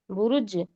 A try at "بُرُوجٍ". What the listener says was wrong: کے بعد، را کے بعد واو پیش، واو سے ملا ہوا ہے، کھینچ کے پڑھیے، بروج، اور کہیے